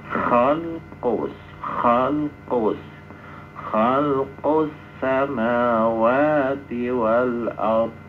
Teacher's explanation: Nah, begitupun ini alnya lam itu memasukkan alnya kepada huruf berikutnya. Maka alnya masuk sempurna kepada sin. Sehingga alnya dalam bacaan tidak nampak ada alnya. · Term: idgham syamsi